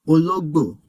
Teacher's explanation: For example, look at the word for cat. It has a middle tone, then a high tone, then a low tone.